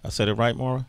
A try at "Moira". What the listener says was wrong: He was putting like a Spanish accent on it.